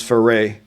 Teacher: in French, you drop the e so it becomes fer